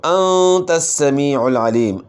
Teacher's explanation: یہ 3 حروف جو ہے صاد ذا سین، ان میں صفت صفیر یعنی سیٹی کی مثل آواز ہوتی ہے · نون ساکن کے بعد اخفاء کے 15 حروف میں سے تا ہے، تو آپ نے غنہ اخفاء کے ساتھ کرنا ہے. اور سین میں صفت صفیر آپ نے ادا کرنی ہے.